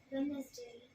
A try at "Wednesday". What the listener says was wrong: गलत बोला, लेकिन इस बार the correct pronunciation is वेंसडे। याद है डब्ल्यू आ गया ना, और तुम चारों में से किसी ने डब्ल्यू के लिए ओ नहीं बनाया।